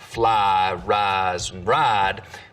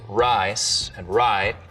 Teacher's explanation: some southerners smooth the diphthong and words like fly rise and ride but use diphthong in rice and right here in the piney woods belt we're going to smooth them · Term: price smoothing